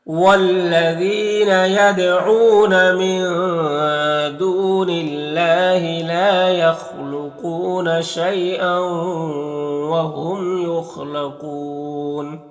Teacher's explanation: یہاں پر میم میں اظہار شفوی ہوگا، خا حروف مستعلیہ میں سے ہے اور قاف بھی حروف مستعلیہ میں سے پر پڑھیں گے. اور یہاں پر وقف کی صورت میں مد عارض وقفی ہوگا تو اس طرح سے پڑھیں گے.